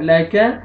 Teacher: کاف کو آپ نے پتلا کا باریک پڑھنا ہے، قا نہیں پڑھنا ہے · واو مدہ، واو جزم سے پہلے پیش ہے، نون کو آپ نے کھینچنا ہے